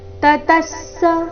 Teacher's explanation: ತತಸ್ಸ ವಿಸರ್ಗದ ಅರ್ಧ ಸ ಮುಂದಿನ ಪೂರ್ತಿಸ ಒಟ್ಟಿಗೆ